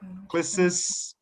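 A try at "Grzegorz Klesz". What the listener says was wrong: I think it's a Gregor Clash. Don't pronounce all the S, Z, CZ. So it's just Gregor Clash.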